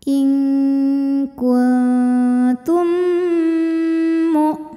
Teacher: Lalu ada hukum idgham mimi karena mim sukun menghadapi huruf mim berharokat. Maka mim yang sukun dileburkan ke mim kedua disertai bunyi dengung. Jadi bunyinya M.